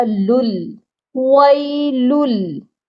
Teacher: سب سے پہلی آیت میں پہلے ہی ورڈ میں وَيْلٌ، لام کو ہم نے دوسرے لام کے ساتھ ملا کر پڑھنا ہے اور پہلے لام کی تنوین کو دوسرے لام کے ساتھ بغیر غنّے کے ملانا ہے